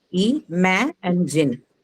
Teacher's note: So ma is the one that will take the stress, the second syllable.